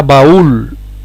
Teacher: ¿Es hiato? Pues sí, porque en este caso el golpe de voz va sobre la vocal cerrada y es hiato